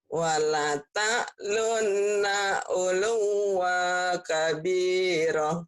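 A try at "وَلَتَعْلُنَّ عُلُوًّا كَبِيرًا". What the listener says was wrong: Wangnya jadi tanwin. Ulu wang. Tanwin ketemu kaf jadi ikhfa ya.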